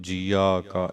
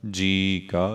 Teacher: ਜੀ ਕਾ, ਜੱਜੇ ਨੂੰ ਬਿਹਾਰੀ ਐੜਾ ਮੁਕਤਾ। ਐੜਾ ਮੁਕਤਾ ਜੋ ਹੈ ਉਹ ਜੀ ਦੀ ਧੁਨੀ ਨੂੰ ਲੰਮਾ ਕਰ ਦੇਗਾ